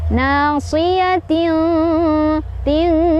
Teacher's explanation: Nasiyatin, ting ada ikhfa ab'ad karena ada tanwin kasrah bertemu dengan huruf kaf. Cara bacanya samar dan berdengung, di mana dengungnya lebih terasa dibandingkan dengan samar-samarnya ya.